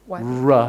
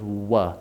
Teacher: he's just rounding his lips instead of saying rah he just says wha and he doesn't get his tongue up there just makes things